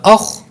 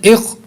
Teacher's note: یہ حروف مستعلیہ ہے، اس کو پر کر کے پڑھیں گے